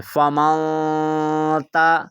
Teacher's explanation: نون ساکن کے بعد تا آ گیا ہے اور تا حروف اخفا میں سے ہے، تو اب ہم نے یہاں پر غنہ کرنا ہے